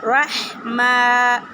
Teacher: رحمہ میں میم کی آواز کو ناک میں نہیں لے کے جانی چاہیے